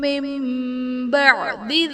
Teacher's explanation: من بعد میں نون ساکن کے بعد حرف با ہے تو یہاں پر نون ساکن کو میم سے بدل کر اخفا کریں گے، یعنی غنہ کر کے پڑھیں گے تو یہاں پر اقلاب کا قاعدہ ہوگا۔